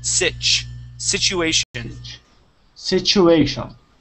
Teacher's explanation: So the T and the U make a CH sound.